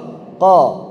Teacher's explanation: lidah kita sedikit menegang sehingga bagian pangkal lidah kita ini kuat sampai naik ke arah langitlangit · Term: tebal